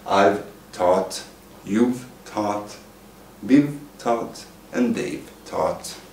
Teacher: When the subject and have becomes one, it becomes a voiced V sound, just like Venus.